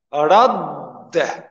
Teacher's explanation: shkronja e parë shkrijet në të dyten dhe atëhere bëhet një shkronjë. Dhe kjo shkronjë, e cila është tash vetëm një dë, e merë të shtidin duke u shqiptuar radde.